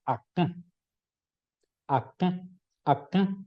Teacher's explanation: Entonces yo tengo ahí la palabra acá, acá, acá. Dos sílabas, primera sílaba oral, segunda sílaba nasal